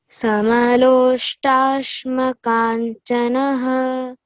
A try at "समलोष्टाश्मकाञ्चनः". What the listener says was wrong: Yes, very nice.